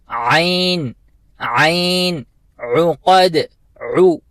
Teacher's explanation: اس کو اکثر دوست جو ہے عقد پڑھتے ہیں، حمزہ کے ساتھ پڑھتے ہیں، جو کہ غلط ہے. عین کی آواز ہمیں وسط حلق سے ادا کرنی ہے اور ہم پڑھیں گے عین عین عقد عو، عین پیش عو، عین پیش عو، عو پڑھیں گے، او نہیں پڑھیں گے.